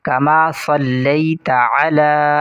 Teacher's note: عین، اس کی آواز کو واضح کر کے پڑھیں گے، حلق سے ادا کریں گے، اور اس سواد کو بھی موٹا کر کے پڑھیں گے